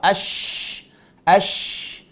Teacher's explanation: Kemudian ada nama sifat at-tafashi, intisyarul hawa.